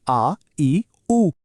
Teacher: ज्यांच्या उच्चाराला थोडा जास्त वेळ लागतो ते झाले दीर्घ स्वर